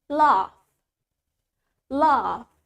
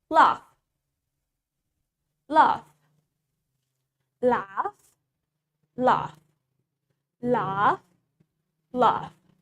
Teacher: In British accent, we have longer A.